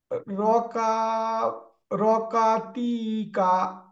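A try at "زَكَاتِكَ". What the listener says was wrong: এটা তো র না, এটা নুক্তা আছে, তাহলে কি হবে?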